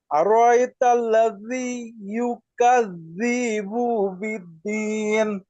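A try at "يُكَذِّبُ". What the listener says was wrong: ইউকাযযিবু টান না, ইউকাযযিবু।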